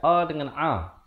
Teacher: Kerana makhraj huruf ain dan hamzah, dia dekat-dekat. Hamzah di bawah ini, ain di atas sedikit. Jadi makhrajnya itu dekat-dekat.